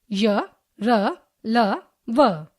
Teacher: इनके उच्चारण में जिह्वा मुख के किसी भाग को पूरी तरह नहीं छू पाती तथा इनके उच्चारण में श्वास अवरोध बहुत कम होता है। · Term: अंतस्थ व्यंजन